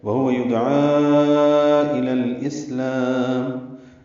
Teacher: یدعا میں دال ساکن پہ قلقلہ ہے، عین وسط حلق سے ادا کریں گے۔